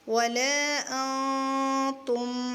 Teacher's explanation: نون کی آواز کو ہم چھپائیں گے کیونکہ یہاں اخفا ہوگا جب ہم ملا کے پڑھیں گے۔ ولا، حمزہ نون زبر ان، کیا بنے گا، ولا تا میم پیش تم، ولا انتم، میم کو ہلائیں گے نہیں کیونکہ یہاں میم ساکن ہے، میم ساکن کے بعد عین آ رہی ہے، تو ہم یہاں پر اخفاء شفوی نہیں کریں گے، اظہار کریں گے۔